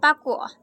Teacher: Bunyi P dengan ciri-ciri mati, oral, bilabial, plosif